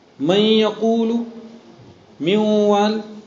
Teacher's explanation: نون کو واو سے بدلا، مگر نون کی صفت گنہ کو آپ نے باقی رکھا. آپ گنہ کر رہے، ایک الف کے بقدر کر رہے. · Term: ادغام ناقص